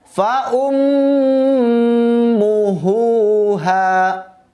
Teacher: Huruf ha besar dua-duanya harus dibaca sampai berasa di dadanya.